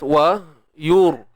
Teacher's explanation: Ni ra yang mati sebelumnya baris hadapan mesti kena tebal. Ra mati sebelumnya baris hadapan kena tebal.